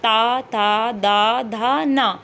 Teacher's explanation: जब आप बोल रहे हैं तो आपकी जीभ है आपके दांतों को टच कर रही है। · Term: ता वर्ग